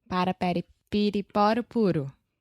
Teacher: your tongue is just touching the top of your mouth really, really fast. And it's just a quick little tap.